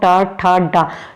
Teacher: जीभ आपकी मुड़ के तब ऊपर लगती है तालू में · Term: ट वर्ग